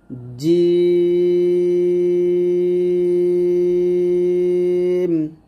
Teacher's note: জিমের মাখরাজ হলো জিহ্বার মধ্যখান তার বরাবর উপরে তাহলে সঙ্গে লাগবে।